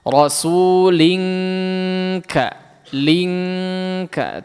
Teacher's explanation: Diperhatikan sin jangan jadi shad, bedakan sin sama shad, bedakan. Nah, rasulinka ini jadi ang. Memang jadi ang, ya